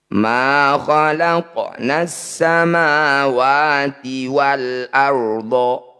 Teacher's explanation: Ra sukun didahului fathah disebut bacaan ra tafkhim atau ra tebal. Bunyi ra-nya kurangi getarannya.